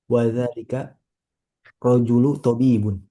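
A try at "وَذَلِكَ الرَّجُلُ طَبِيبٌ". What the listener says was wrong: Disambung ya. Wa dzalikar rajulu tabibun. Jangan dipisah-pisah karena ini satu kesatuan seperti itu.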